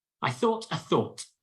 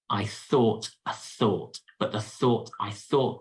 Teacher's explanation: you've got that unvoiced th sound the air between the teeth and tongue with the strong at the end I thought a thought but